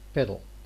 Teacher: Because of the absence of the vowel, the L assumes the responsibility of the peak of the syllable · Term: syllabic